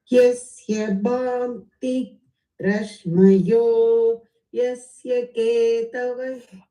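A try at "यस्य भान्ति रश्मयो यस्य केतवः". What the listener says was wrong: அவசரப்பட வேண்டாம். மெதுவாக நிதானமாக அதை சொல்லுங்க. In terms of tempo. பாந்தி வரைக்கும் கரெக்டாக இருந்தது. ரஷ்மயோ கீழே போகணும். ரஷ்மயோ எஸ்ய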